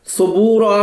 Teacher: سا کو نرم پڑھنا ہے، ذال کی طرح حرف لسفیہ ہے، سین کی طرح نہیں پڑھنا